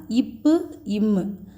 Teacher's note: மேல் உதடும் கீழ் உதடும் சேர்ந்து தோன்றும். இது வந்து நன்னூல் 81ல மீ கீழ் இதழுற பம்ம பிறக்கும் அப்படின்னு சொல்லிருக்காங்க.